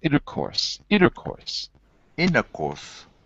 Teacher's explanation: we say it's so fast that you don't even hear the t